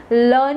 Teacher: લના ઉચ્ચારણ વખતે જીભનો આકાર ઊંધા નળિયા જેવો થઈ જાય છે અને જીભની બાજુમાંથી હવા ઘસાઈને પસાર થાય છે, માટે તેને સંઘર્ષી પાર્શ્વિક ધ્વનિ પણ કહેવામાં આવે છે.